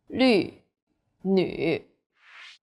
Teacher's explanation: The U sound is like the French U. Your lips should be round and pouting.